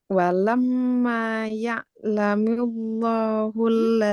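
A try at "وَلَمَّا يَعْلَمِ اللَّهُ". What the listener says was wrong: Tidak tebal. Jadi lafaz Allah itu lamnya dibaca tebal cuma kalau huruf sebelumnya fathah atau dhammah. sebelumnya kasroh nggak usah ditebalkan. Jadi bukan ya'lamillah ya, tapi ya'lamillah.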